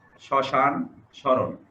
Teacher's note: মফালা যখন শব্দের প্রথমে উচ্চারণ হয়, প্রথমে যুক্ত হয়, তখন এই উচ্চারণে কিছুটা ঝোঁক পড়ে এবং সামান্য নাসিক্য স্বর হয়। এখানে ময়ের উচ্চারণ থাকে না, যেমন শ্মশান, শরণ, এখানে শয়ের সাথে ম আছে, কিন্তু এখানে ময়ের উচ্চারণ উজ্জ আছে, অনুচ্চারিত আছে।